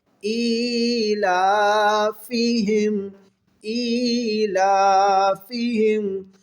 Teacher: فا کے نیچے زیر ہے، یہ مجہول نہ پڑھا کریں، ٹھیک ہے؟ معروف پڑھیں